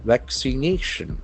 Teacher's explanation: we can see that the accent falls on third syllable